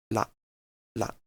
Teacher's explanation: So basically, you vibrate your vocal cords and tap the alveolar ridge with the tip of the tongue. So something like la, la. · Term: Voiced apical tap